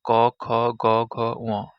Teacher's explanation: এগুলো সরাসরি কণ্ঠনালী থেকে উচ্চারিত হয়, তাই এগুলোকে কণ্ঠবর্ণ বলা হয়